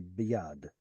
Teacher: I don't split up an audible schwa. I throw it into the next syllable, right? So instead of b yad, I say biyad.